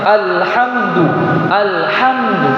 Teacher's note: Jadi salah jadi harus dibaca izhar, harus dibaca jelas lamnya.